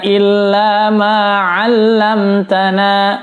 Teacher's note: mim sukun bertemu ta, hukumnya adalah izhar syafawi, jelas. 'Allamtana, jangan sampai ditahan.